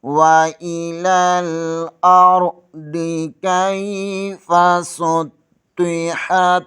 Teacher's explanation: سین اور صاد میں فرق ہونا چاہیے، یہاں سیٹی کی آواز نکلنی چاہیے۔ طا کو پر پڑھیں گے، حا زبر کو تا کے ساتھ ملا دیں گے۔